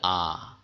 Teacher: আ হল মধ্যস্থ সে প্রসারিতও নয় কুঞ্চিতও নয়